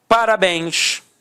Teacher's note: Repare que a sílaba tônica é a última e é terminada em ens. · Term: oxítona